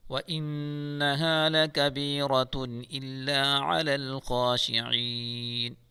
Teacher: نون مشدد ہے، گنہ کے ساتھ پڑھیں گے